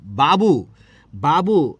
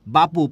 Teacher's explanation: এই বটা হচ্ছে কি ধ্বনি, ঘোষ ধ্বনি, কিন্তু বাবু থেকে কি হয়েছে বাপু, প হচ্ছে কি অঘোষ ধ্বনি।